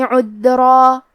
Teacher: آخری میں را پہ تنوین زبر ہے، ہم یہ کلمہ پہ روکیں گے تو تنوین زبر پہ مد الف سے روکیں گے · کلمت عذرا میں دال کو ظاہر کریں گے کیونکہ یہاں دال ساکن ہے تو ہمیں دال کو ظاہر کرنا ہے۔